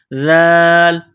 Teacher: ذال کو نرم کرنا ہے، زبان تھوڑی سی باہر نکالیں گے ذال کو پڑھتے وقت